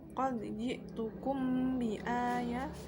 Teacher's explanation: dengan suara yang samar antara mim dan ba pada bibir, kemudian ditahan kira-kira 2 ketukan bersamaan mengeluarkan suara ikhfa dari pangkal hidung, bukan mulut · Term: ikhfa syafawi